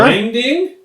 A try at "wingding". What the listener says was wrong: Wing. No, you're saying it like Dave would say it. It's not wangding. It's wingding.